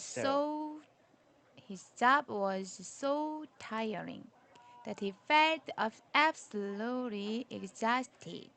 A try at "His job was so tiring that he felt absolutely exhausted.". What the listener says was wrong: Don't pause here. His job was so tiring that he felt absolutely exhausted.